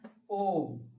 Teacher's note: देखो होठ गोल हो जाता है।